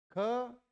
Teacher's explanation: ख स्पर्श व्यंजन है, कंठ है, अघोष है और महाप्राण है।